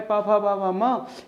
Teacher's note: प वर्ग पूरा किससे बोला जाता है, ओष्ठ से बोला जाता है दोस्त। इसलिए म का उच्चारण स्थान होगा ओष्ठ, माने होठ से बोला जाएगा, लेकिन पंचम अक्षर होने के कारण इसका उच्चारण स्थान नासिका भी होगा, दो दो उच्चारण स्थान होते हैं।